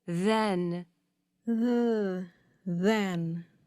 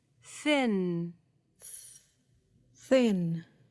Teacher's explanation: the tip and put your hand on your vocal cords to feel the difference between the voiced and voiceless th